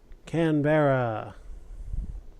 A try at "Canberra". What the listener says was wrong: You have to say it faster. They say it more of like Canberra. Almost Canbra.